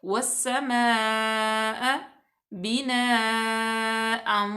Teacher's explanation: हमज़ा उसी कलिमे में है तो ये हो जाएगी मद्दे मुत्तसिल। इसको हम 4 अलिफ के बराबर लंबा करेंगे।